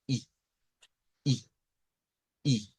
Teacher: La eh es un sonido frontal, eso nos quiere decir near front, significa que es al frente eh de lo que vendría siendo nuestra boca. Nos dice que es near close, o sea, un poquito cerrado, no tan cerrado como la i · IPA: /ɪ/